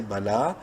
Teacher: لام کھڑی زبر لا ایک الف برابر لمبا کریں گے